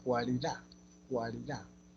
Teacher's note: Las vocales tenemos acá, por ejemplo, en cualidad, cualidad, es una cerrada y una abierta, y es creciente